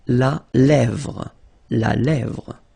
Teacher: Remember, accent grave here. Really open.